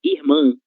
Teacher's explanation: Nessa palavra, a sílaba tônica será man